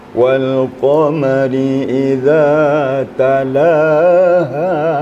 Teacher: Ha di akhir tu kerana dia di akhir tetap kita sempurnakan bunyinya.